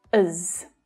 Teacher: it's often unstressed, as. Again, using the schwa for the unstressed sound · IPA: /əz/